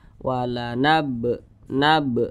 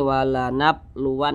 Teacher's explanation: jadi apabila dia suun atau sebab disukunkan maka bacanya itu dipantulkan ini huruf ba kemudian dia sukun nah Berarti cara bacanya dipantulkan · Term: Qalqalah Sugra